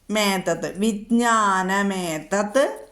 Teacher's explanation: അതുകൊണ്ട് നമുക്ക് എൽ ഉച്ചരിക്കാം ശിലപാതി കർമ്മജ അടുത്തത് വേദാഹ ശാസ്ത്രാണി വേദാശാസ്ത്രാണി വിജ്ഞാനമേതത്ത് വിജ്ഞാനം ഏതത്ത് അനുസ്വാരവും എയും കൂടി മേ എന്ന് വന്നു